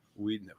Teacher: in German the second vowel is long as in diesel